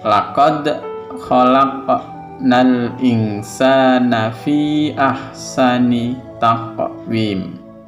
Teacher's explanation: ada suara pantulan ketika membunyikan qad, laq, taq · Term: qalqalah